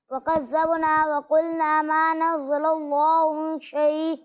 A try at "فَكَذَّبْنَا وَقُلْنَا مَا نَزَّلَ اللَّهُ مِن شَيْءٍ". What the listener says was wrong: آپ حروف کو ظاہر کرنے کی کوشش کریں ٹھیک ہے ہر حرف ظاہر ہونا چاہیے حروف کو دبا کر نہ پڑھیں ٹھیک ہے واضح آواز میں پڑھیں اور جس حرف کو جس طرح ادا کرنا ہے اسی طرح ادا کریں جہاں سیٹی کی آواز آنی چاہیے وہاں آئے اس کے علاوہ نہیں آنی چاہیے جیسا کہ آپ نے یہاں رال میں سیٹی کی آواز نکالی تو ایسا نہیں ہونا چاہیے ٹھیک ہے اور یہاں آپ نے غنہ واضح